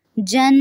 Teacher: جن یہاں پہ نون مشدد پہ غنہ ہوگا، ناک میں آواز لے کے جائیں گے